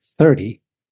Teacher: notice what happens to the T sound when we say 30 we change T to D